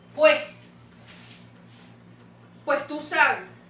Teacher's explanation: hay una relajación de la consonante s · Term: relajación de una consonante